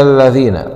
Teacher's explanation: مراعاة مخرج الذال، طرف اللسان مع أطراف الثنايا العليا